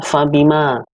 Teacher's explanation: Mad Thobi'i atau mad asli artinya adalah dibaca panjang dua harokat